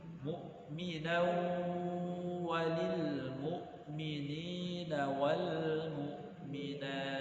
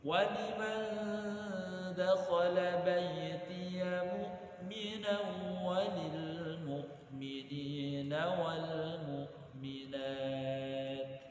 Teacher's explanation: Idgham bi ghunnah itu artinya masuk disertai dengan dengung. Berarti tanwin kita masukkan ke waw dan sekaligus kita dengungkan.